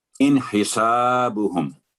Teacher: ان نون ساکن کے بعد حروف ہلکیہ تو نون پر آواز شارٹ ہوگی, اظہار کا رول اپلائی ہوگا